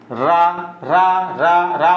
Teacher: रा बोलो तो जीभ में एक प्रकार का कंपन उत्पन्न होता है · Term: प्रकंपित